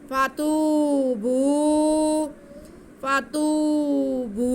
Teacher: फातूबू, फा पे ज़बर, ता पे पेश और वाव साकिन, ये वाव मद्दा हो गया। ता की आवाज़ को हम एक अलिफ के बराबर खींचेंगे